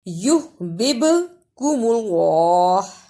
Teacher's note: ہا کی آواز بھی آنی چاہیے اور با کو با سے بھی ملانا ہے قلقلے کے ساتھ